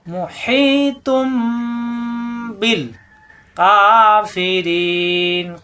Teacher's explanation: মুহীতুন, এখানে আসছে তুন তানবিন, তানবিনের পরে আসছে বা, এই জন্য এই তানবিনকে মিম ধরে পড়তে হবে পরিবর্তন করে। এই তুনের জায়গায় হবে তুম।